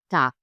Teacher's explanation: at the end of the word G sounds like K